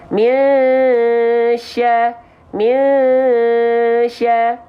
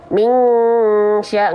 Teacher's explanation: Jadi ketika kita lafalkan mi, itu sambil siap-siap melafalkan huruf berikutnya, itu shin. Misya, misya. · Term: ikhfa